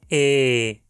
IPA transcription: eː